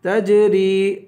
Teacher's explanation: را کو یا سے ملا کر یا کو ایک الف کی مقدار کھینچ کے پڑھیں گے